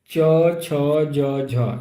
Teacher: ये तालव्य है यानी कि तालु से इसका उच्चारण किया जाता है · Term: तालव्य व्यंजन